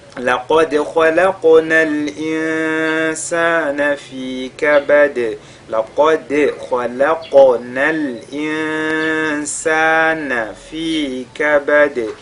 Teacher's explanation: la lettre qaf avec al-tafkhim, le dal avec al-qalqala, le kha avec al-tafkhim, le qaf avec al-qalqala, al-insan, nun sakin suivi de sin, al-ikhfa, et puis fi kabad, on termine par al-qalqala.